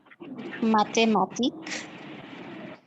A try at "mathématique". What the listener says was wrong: Mathématique. Okay, oui, mathé. All right, good.